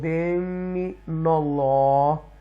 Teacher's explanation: زبر آ رہی ہے اللہ کے نام سے پہلے, تو تفخیم کے ساتھ پڑھیں گے اللہ کو